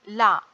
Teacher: நாவின் நுனி மேல்வாய் பல்லின் அடிப்பகுதியை தொடுவதால் பிறக்கும் எழுத்து நா. நாவின் இரு பக்கங்கள் தடித்து மேல் பற்களின் அடியை தொடுவதால் தோன்றும் எழுத்து